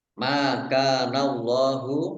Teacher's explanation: Allahnya dibaca tebal karena harakat di depannya fathah